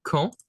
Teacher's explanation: So be careful, the D is mute.